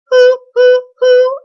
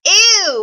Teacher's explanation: And I'm talking like an oo, not ew, which is a very Delaware County thing to do. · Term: pure oo vowel